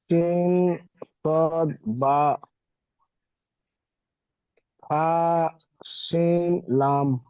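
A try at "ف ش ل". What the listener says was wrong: ফা, শিন, শিন অক্ষর তিন আলিফ টান হবে, লাম তিন আলিফ টান হবে। আরো বেশি করে টান দিয়ে পড়বেন জি।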